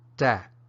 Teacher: an abrupt ending and that's the stop tone in Myanmar